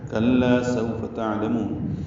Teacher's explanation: تعلمون عین ساکن پہ اظہار، لام کو جلدی پڑھنا ہے، میم کو لمبا کرنا ہے. مد عارض للسکون ہے، وہ مدہ کے بعد نون ساکن ہونے کی وجہ سے عارضی سکون ہے، اس لیے مد عارض للسکون ہے.